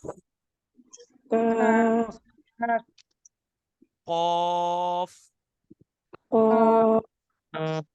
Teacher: कॉफ जो है ना, वो हलक की बिगिनिंग से स्टार्ट होता है